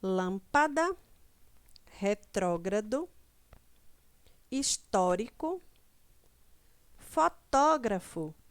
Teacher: a antepenúltima sílaba é pronunciada com mais força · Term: proparoxítona, proparoxítonas